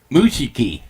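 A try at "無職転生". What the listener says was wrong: I think it's Mushoku, there is no I in the...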